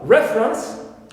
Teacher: we stress here first syllable, although the verb is refer, second syllable in the original stem is stressed. But here we have a shift of stress to the first one, clear, because it's an exception here, although it ends with right.